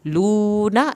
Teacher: واو ساکن کو کھینچیں گے، نون کی زبر کو لمبا ہرگز نہیں کرنا